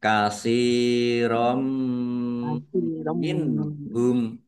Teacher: Nun sukun bertemu dengan huruf H. Bacaan idhar dibaca jelas. · Fathah tanwin bertemu dengan huruf mim bacaan idgham bi gunnah masuk dengan mendengung mim Ditandai mimnya ada tasdidnya.